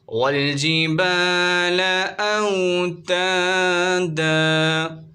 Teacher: الف سے پہلے با پر زبر آ رہا ہے، الف مدہ ہوگا، ایک الف کی مقدار کھینچیں گے · یہاں پر دو زبر کی تنوین ہے، وف کی صورت میں اسے الف سے بدل دیں گے